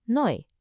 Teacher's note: The combination EU makes an oi sound, so new is neu.